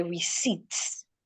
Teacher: If I have the word receipt, the letter P here is not making any sound. So I should not say receipt. The P should not be heard.